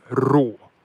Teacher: Just a rolling R instead of raw, it's rå. Fucking rå, bror!